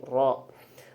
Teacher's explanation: Ro itu adalah laswi, termasuk huruf yang dari gusi. Kemudian tambahan tikrori yang dibulak-balik. Kemudian dia termasuk mutawasid, jadi antara pertengahan antara gesekan dan letupan.